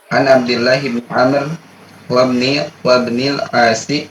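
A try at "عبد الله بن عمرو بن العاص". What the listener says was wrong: Bukan wa, itu Amr. Wa di situ itu untuk membedakan Amr dengan Umar. Dalam bahasa Arab ada dua nama, ada Amr, ada Umar. Kalau Umar itu tidak ada wawunya, kalau Amr ada wawunya.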